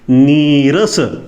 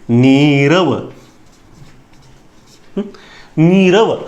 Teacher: विसर्गाचा लोप झाला आणि मागच्या वर्णामधील ऱ्हस्व स्वर दीर्घ स्वरामध्ये परावर्तित झाला. इथं ऱ्हस्व हा पहिला नी आहे, ई आहे, आणि इथं हा दुसरा आहे, नीरस.